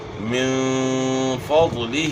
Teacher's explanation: نون ساکن کے بعد فا ہے تو یہاں اخفا کے ساتھ اپ نے غنہ کرنا ہے